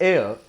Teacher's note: It is not hair. H is silent here. It is just pronounced as air.